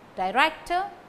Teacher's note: Director, stress falls on rector.